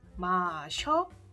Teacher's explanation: So that means we have to put 어요 for that. And whenever this e and 어요 met, it will change to 여 sound